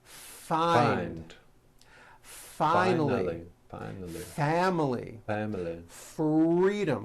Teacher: you need to hear the air friction